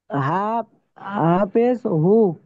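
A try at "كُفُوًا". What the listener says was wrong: এখানে হা নাই এটা ফা এটা ফা এটা ফা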